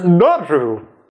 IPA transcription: ɗəru